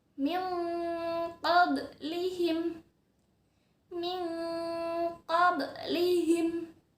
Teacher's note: bunyi nun sukunnya dimasukkan ke dalam bunyi qaf.